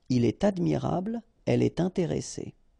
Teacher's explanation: in all these cases you should make the liaison, and in that case it's with T.